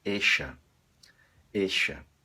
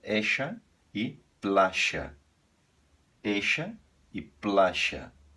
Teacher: Em boa parte da Argentina, sobretudo na capital, eles fazem usar o sh, como se fosse o nosso X